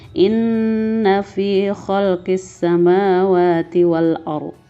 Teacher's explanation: Gunnah artinya adalah dengung. Maka bacaannya yang inna ini kita dengungkan 2-3 harokat.